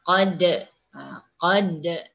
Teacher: Jadi perlunya kita ni membaca pada kalimah qad tu ada antulan. Contohnya bunyinya qad. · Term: qalqalah sughra